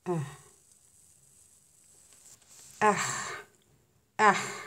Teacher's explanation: Elif ince harf. Elif ince okuyorum. H kalın harf. H'yı kalın okuyorum. İnce kalına doğru hafif kalınlaşıyor.